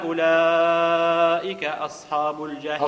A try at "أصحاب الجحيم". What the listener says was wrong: أصحاب ما تخليش الحال داخل خليها على برا. أصحاب مش أصحاب كن خلي الحال داخل الفم تولي مفخمة. أصحاب مش أصحاب تخليهاش الداخل خرج الحرف من برا.